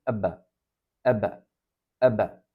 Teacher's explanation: Sakin olduğunda bir fazladan ses çıkması gerekir ebe ebe şeklinde Buna da Arapçada kalkale denir